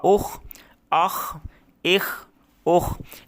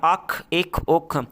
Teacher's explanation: بعض ہوتے ہیں جو پڑھتے ہیں اکھ، اکھ، اکھ، یہ کھا نہیں بلکہ خا پڑھا جائے گا۔ یہ حروف حلقی میں سے ہے تو اس کو حلق میں سے اس کی آواز نکالنی ہے۔